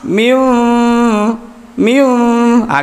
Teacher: di bibir bawah dengan atas itu tidak merapat secara sempurna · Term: iqlab